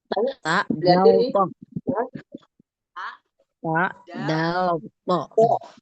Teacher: itu ujung lidah bertemu dengan gigi seri atas